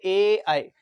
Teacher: कंठ और तालव्य दोनों से ही मिलकर के बनते हैं, उनको बोलते हैं ए आई।